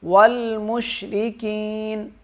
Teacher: یا ساکین ہے، اسے 1 الف کے برابر کھینچ کر پڑھیں گے